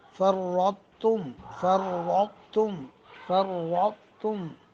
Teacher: تو کی آواز کو باقی رکھنا چاہیے بغیر قلقلہ کے، پھر تا کو باریک پڑھنا